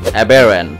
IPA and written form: əˈbɛr(ə)nt (Aberrant)